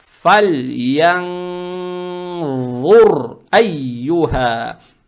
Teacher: И далее стоит буква ра с сукуном. Учитывая то, что буква ра с сукуном, а перед буквой ра стоит дамма, букву ра произносим твердо.